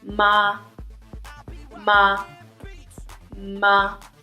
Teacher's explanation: it is considered neutral it is short and weak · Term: neutral tone